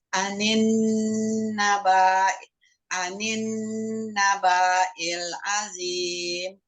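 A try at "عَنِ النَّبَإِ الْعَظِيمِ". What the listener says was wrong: Ba-nya pendek, naba'il.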